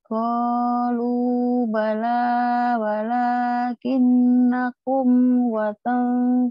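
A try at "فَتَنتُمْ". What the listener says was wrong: Fatang bukan watang. Fatang itu fa.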